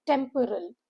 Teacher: Syllable break is three. Temporal stress is on the first syllable.